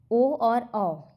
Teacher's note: इनका उच्चारण कंठ और ओष्ठ दोनों से होता है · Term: कंठोष्ण वर्ण